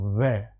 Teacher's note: होठ का भी यूज हो रहा है, दांत का भी यूज हो रहा है। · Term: दंतोष्ठ